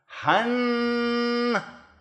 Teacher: For an N, that would be the tip of your tongue against the back of your top teeth.